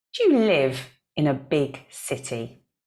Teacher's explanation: notice that do you get squashed together we say dear dear and then our stressed words are live